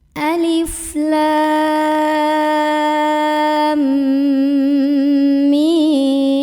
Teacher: Alif 1 harokat, lam 6 harokat. Dari lam ujungnya kita dengungkan dulu, masuk ke mim, mimnya 6. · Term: mad lazim